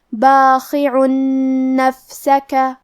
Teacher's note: کلمت باخع کے آخری میں حرف العین پہ تنوین پیش ہے، پھر حرف النون ہے۔ کلمت نفسک، نون حروف الادغام بغنہ میں سے ہے، تو ہم یہ حکم کو غنہ اور تشدید کے ساتھ ادا کریں گے